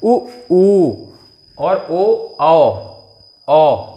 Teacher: जब हम बोलते हैं तो अपने ओंठों का आकार जो है वो गोल हो जाता है। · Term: वर्तुल